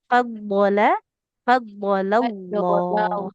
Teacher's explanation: karena diapit dua huruf tebal, lamnya tetap tipis.